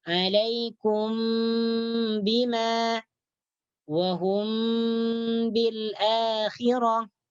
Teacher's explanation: menyembunyikan bacaan mim mati di sisi ba dengan dengung yang ringan. Dengan dengung yang ringan. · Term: ikhfa syafawi